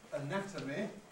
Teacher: when we have the noun anatomy where the stress is on the second syllable of the stem we get a strong vowel in that syllable